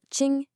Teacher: The first syllable ching is a high and flat first tone.